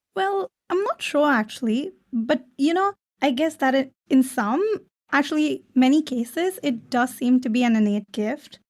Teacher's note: The uptalk is the increasing intonation. So she goes up when she should be going down.